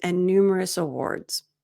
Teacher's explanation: And here you can say and numerous awards, but as you can hear when I read it naturally, I use a reduced form and numerous, so the D is reduced